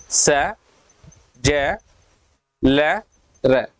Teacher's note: हमारी जीभ दंत मूल को, ऊपरी जबड़े के दंत मूल को टच कर रही है।